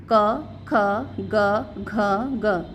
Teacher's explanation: यह कहां से बोल रहे हैं हमारे कंठ से बोल रहे हैं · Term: क वर्ग